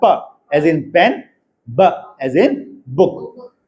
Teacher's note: प्लोजिव है और bilabial प्लोजिव। The two lips are the articulators.